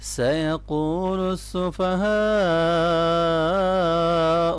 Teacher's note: سیقول قاف کو موٹا پڑھیں گے، واو کو مدہ ہے، اس کو لمبا کرنا ہے۔ سیقول، اور جب اس کو ملائیں گے آگے سین کے اوپر شد ہے تو سیقول السفہاء۔